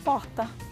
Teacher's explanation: O brasiliense tem uma forma mais amenizada de pronunciar o R, que nós chamamos de róticos, né? A gente não pronuncia porta.